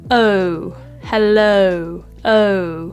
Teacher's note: of hello is actually a diff thong which essentially means that there are two sounds of the vowel that slide together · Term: moving vowel